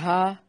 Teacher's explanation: چوٹ لگتی ہے نا تو ہا، جہاں سے ہا کی ٹیس نکلتی ہے وہاں یہ اس کا مخرج ہے، اقصی حلق